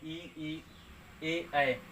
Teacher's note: अग्र स्वर का मतलब जब बोलते समय ई बोलेंगे तो जीभ का जो होता है आगे आगे से टच कराना पड़ता है, ई ए तो जीभ जो होता है वो आगे निकलने की कोशिश करता है, इसलिए हम अग्र स्वर बोलते हैं